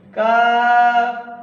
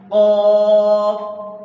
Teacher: منہ کے اینڈ سے، زبان کی جڑ سے، زبان کو، جڑ کو تھوڑا سا نیچے رکھیں گے تو کاف باریک پڑا جائے گا، اور زبان کو اٹھا دیں گے تو قاف